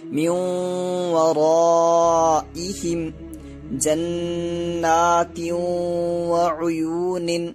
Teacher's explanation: ادغام ناقص ہوگا اور ناک میں ایک الف کے برابر آواز چھپائیں گے